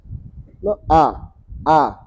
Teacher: Fathah artinya terbuka ya. A a terbuka rahangnya.